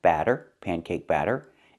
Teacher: Batter with the open A sound like black cat